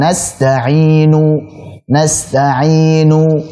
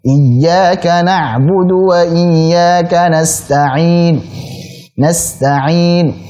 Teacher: Adapun raum, suaranya dilirihkan, ya, suaranya direndahkan.